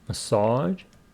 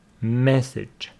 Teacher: Stress on the second syllable, massage. Here, first syllable, message.